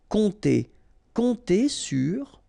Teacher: remember this P is not pronounced, and then O and M together will give you this nasal on